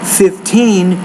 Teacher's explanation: with a number of teen, you have to put stress on the second syllable, not the first syllable